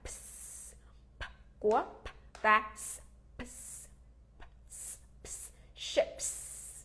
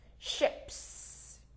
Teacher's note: À, mà tại vì tận cùng là không có rung. Phụ âm không có rung nè. Nên thành ra mình thêm s vào thì mình vẫn xì bình thường.